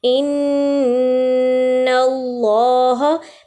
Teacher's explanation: اسی طرح ان اللہ، پہلے ہم نے نون پہ غنہ ادا کیا ہے، پھر ہم نے دیکھا ہے کہ اللہ کے لام سے پہلے زبر آ رہی ہے تو اللہ کا لام موٹا ادا ہوگا